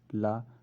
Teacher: प्रयत्न के आधार पर ल स्पर्श पार्श्विक ध्वनि है